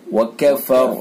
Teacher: वफ की सूरत में रा साकिन हो जाएगी, उससे पहले जबर तो पुर होगी, यानी रा साकिन माक़ मुतहर्रिक वाला कायदा हो जाएगा। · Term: रा पुर